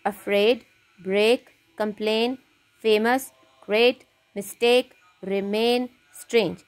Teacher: these words have the sound e i as in rain in them